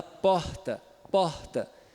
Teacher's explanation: um fricativo plano glotal surdo, com ar pulmonar expirado.